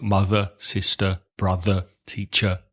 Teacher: British English in the south of England has what's called the schwa, which is the that we've spoken about before at the end of words ending in ER.